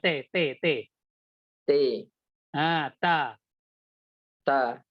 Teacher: ujung lidah ketika melepaskan huruf ta itu berada di Pangkal gigi seri